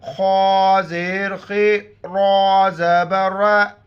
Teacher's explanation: خا اور را دونوں موٹے الفاظ ہیں، موٹا کر کے پڑھیں گے، ریڈ کلر میں ہے، اور را پر جب بھی زبر او پیش ہو را کو موٹا کر کے پڑھیں گے۔